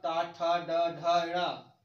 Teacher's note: टा वर्ग हमारा जो है इसको बोला जाता है मूर्धा